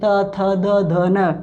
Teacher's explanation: त में दांतों पे हमारी जीव टच होती है